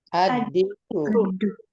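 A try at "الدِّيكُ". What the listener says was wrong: ad-diku. Pakai tasydid ya, ad-dik. Iya, tasydidnya kasrohnya di bawah tasydid ini lagi. Lagi-lagi kasrohnya di bawah tasydid ya. Biasanya kita terbiasa dengan kasrohnya di bawah huruf ro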